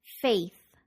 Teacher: To pronounce the A vowel sound in faith, be sure to pull your lips back so that you can include the Y sound in A.